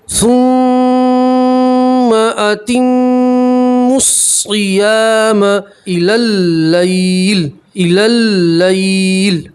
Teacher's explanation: یہ واو الف اور یہ الف اور لام نہیں پڑھیں گے, میم کو سیدھا صاد سے ملائیں گے. میم کے اوپر تشدید ہے, میم میں گننا کریں گے. اس میم کے اوپر بھی تشدید ہے, میم میں گننا کریں گے.